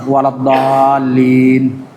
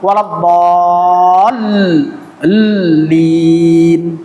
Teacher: Waladdallin salah. Harus ada penekanan di tasydid pada lam. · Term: nabr